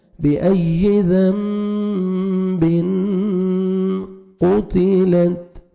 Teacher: تنوین کے بعد حروف اخفا جو 15 لیٹرز ہیں ان میں سے قاف آ رہا ہے تو یہاں پہ آپ نے نوز میں ساؤنڈ لے کے جانا ہے۔ بِأَيِّ ذَنبٍ قُتِلَتْ، قاف کو موٹا کر کے پڑھنا ہے، تا کو باریک پڑھیں گے اور لاسٹ میں تا ساکن ہے، ہلکا سا ساؤنڈ آئے گا تا کا۔